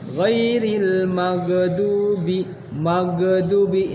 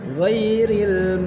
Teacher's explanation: Ghain bukan termasuk huruf qalqalah juga, maka ghain tidak boleh dipantulkan.